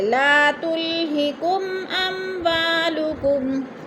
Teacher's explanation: اظہار شفی غنہ نہیں کریں گے، لفظ کو ظاہر کر کے پڑھیں گے